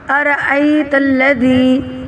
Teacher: أرأيت الذي يكذب بالدين، یہاں پہ أرأيت الذي، تو یہاں پہ حمزہ ہے، متحرک ہے، تو اس کو کھینچنا نہیں زیادہ، صرف ایک حرکت ہے۔ ای کو بھی زیادہ نہیں کھینچنا، کیونکہ یہاں پہ لین بن رہا ہے، تو لین کو زیادہ نہیں کھینچتے۔ را کو موٹا پڑھیں گے کیونکہ اس کے اوپر زبر ہے۔